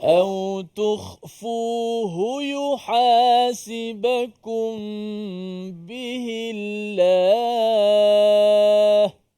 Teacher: huruf ha, cuba kita intonasi suara itu dikuatkan sedikit, ditekankan kerana huruf ha itu lemah.